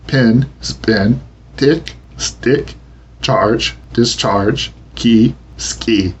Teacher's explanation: This puff of breath is called aspiration, and consonants accompanied by it are said to be aspirated. English P, T, CH, and K, often spelled with the letter C as in cat, are aspirated in the initial position, and not after the consonant S.